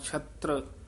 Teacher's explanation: ਛੱਤਰ ਨਹੀਂ ਕਹਿਣਾ, ਪੋਲਾ ਹੀ ਬੋਲਣਾ ਹੈ